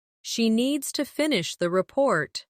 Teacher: stress needs and report and let the small words fall quietly